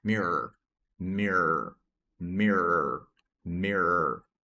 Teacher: Ele tem esse som do schwa aqui, mirror, esse som de ele às vezes é até oculto, a ponto que é um R mais prolongado.